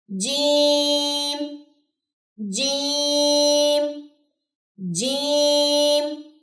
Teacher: اس کو کبھی بھی چیم نہیں پڑھنا، اس کے اندر سے چے کی ساؤنڈ نہیں آنی چاہیے